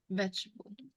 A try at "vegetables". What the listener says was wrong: When I was a child, I liked to eat vegetables. Is that what you said? Okay, just remember vegetables, you must pronounce the S on the end of vegetables, okay? Vegetables, okay, plural.